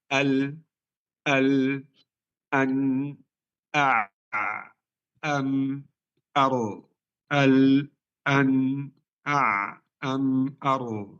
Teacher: tidak tertahan suara sempurna, tidak mengalir sempurna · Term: tawassut